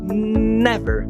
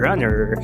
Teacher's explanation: Para pronunciar, você coloca a língua atrás dos dentes superiores e toca nos alvéolos, que é essa camada enrugadinha atrás do dente superior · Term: consoante oclusiva nasal alveolar vozeada